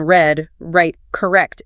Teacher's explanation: It's not rolled or tapped. You need to pull your tongue back slightly in your mouth. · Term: English R